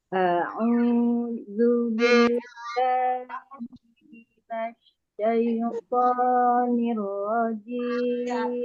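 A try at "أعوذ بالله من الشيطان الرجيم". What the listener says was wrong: Lembut Bu. Tonya itu tebal. Syaiton. Syaitonir rajim.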